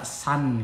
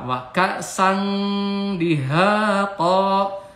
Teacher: Wa kasang ini ikhfa ya, tanwin sang ini huruf dal, jadi nun mati berhadapan dengan huruf dal atau tanwin ya, ini tanwin fatah berhadapan atau bertemu dengan huruf dal dibaca ikhfa atau samar. Suara n-nya diganti dengan dengung.